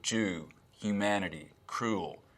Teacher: tennessee accents and southern accents in general have something called goose fronting